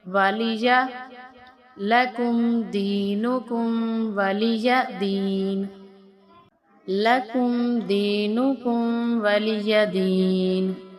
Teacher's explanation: لکم دینکم والی یا کو نہیں کھینچیں گے، یا کو لمبا نہیں کریں گے